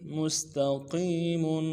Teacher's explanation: قم صراط مستقیم مستقیم، میم کو سین کے ساتھ ملانا ہے، سیٹی والا حرف سین باریک ادا کریں گے، سیٹی بھی ہوگی باریک ہوگی، تا کو نرمی سے ادا کریں گے۔